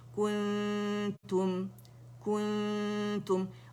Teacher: کاف پہ دمہ ہے تو کاف میں رول کریں گے لپس کو, اور نون ساکن ہے تو یہاں پہ ہمارے لپس جو ہے ان رول ہو جائیں گے, اور کاملہ گریڈ کا ہم نے اخفاء حقیقی کرنا ہے.